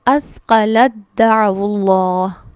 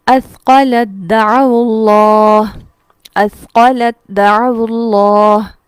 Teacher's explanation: اثقلت دعو اللہ. یعنی ہم لام کو ڈائریکٹ دال سے ملائیں گے. یہاں تا لکھا ہوا تو موجود ہے لیکن پڑھنے میں نہیں آئے گا. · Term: ادغام تام